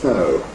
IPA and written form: sn̥əʊ (snow)